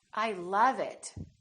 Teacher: it so don't say I love it say I love it make the uh really long